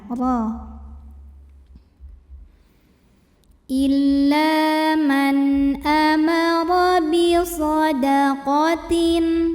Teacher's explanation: atas yaitu baris fathah maka cara bacanya ditebalkan pangkal lidah kita naikkan